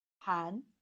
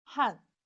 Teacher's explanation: Han second tone, Korean. Han fourth tone, Chinese.